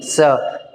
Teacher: क्योंकि स आपने वर्तस्य में भी देख लिया और आपने दंत में भी देखा। तो स बोल रहे हो आप, तो हवा आपके दांत से निकल रही है